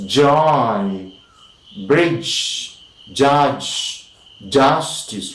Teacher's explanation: the blade and the front of the tongue is lifted towards the center of the roof of the mouth, the hard palate, and it is lifted forward of course to the alveolar, and we say palato alveolar.